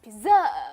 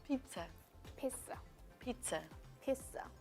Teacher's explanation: The stress is in fact on the first syllable.